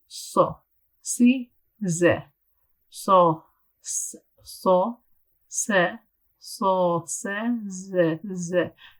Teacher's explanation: Safir is whistling, so there should be almost like a whistling sound.